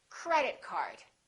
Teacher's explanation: we stress the first word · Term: compound nouns